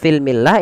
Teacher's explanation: ketika bertemu dengan huruf mim, lamnya dibaca dengan jelas. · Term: alif lam qamariyah